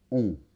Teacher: il s'agit de la voyelle nasale on